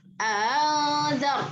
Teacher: pengucapannya adalah seperti bunyi antara huruf hamzah dengan huruf yang lahir dari harokatnya. Kalau harokatnya fathah berarti huruf alif, ya. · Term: tashil